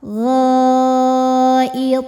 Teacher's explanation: Karena ada huruf qalqalah yang sukunnya karena berhenti membaca. Maka dibaca dipantulkan dengan pantulan yang besar dan tebal ya, karena to huruf tebal. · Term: qalqalah kubra